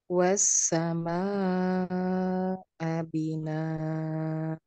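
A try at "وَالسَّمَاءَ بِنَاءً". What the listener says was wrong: A-nya kurang terdengar. Saya ingatkan kembali ya, Bapak Ibu sekalian, di sini ada fathah tanwin.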